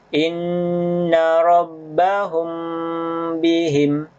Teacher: huruf ba ini disebut dengan Ikhfa Syafawi jadi cara membacanya yaitu hanya dengan menutup kedua bibir sesuai dengan makhraj huruf mim